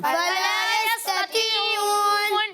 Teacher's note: ادھر یہ دونوں ایک ساتھ آ رہے ہیں تو آپ لوگ کو تھوڑا سا پر پڑھنا ہے توا کو، اور تا کو باریک پڑھنا ہے